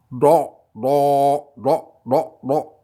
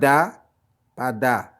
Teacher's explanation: Et celle qui suit, le sod avec un point, a une toute autre prononciation. C'est un D au fond de la gorge.